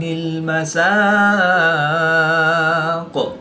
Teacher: با مشدد ہے اور یہ حروف قلقلہ میں سے ہے تو یہاں پر قلقلہ کبریٰ کر کے پڑھیں گے. وقف کی حالت میں قاف کی پیش کو ساکن کریں گے تو یہاں پر وقف کی حالت میں قلقلہ صغریٰ کر کے پڑھیں گے